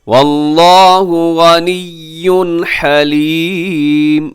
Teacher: لفظ اللہ موٹا اور لمبا کیجیے گا کھڑی زبر کی وجہ سے